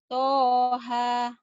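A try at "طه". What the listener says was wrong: Yang toha. Toha. Jangan ada hahnya ya.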